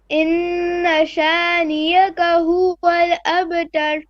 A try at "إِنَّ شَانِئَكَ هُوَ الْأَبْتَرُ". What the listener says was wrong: Okay, same thing because we have a sha, ni, and then hamza. Don't merge the ni with the hamza. Don't say niyaka. Niyaka is not correct. Ni'aka. Ni'aka, not niyaka.